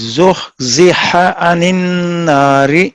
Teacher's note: پہلے جوڑے میں ہا میں ہمس ہے، عین میں جہر ہے. دوسرے جوڑے میں ہا میں رخوت ہے، عین میں توسط ہے.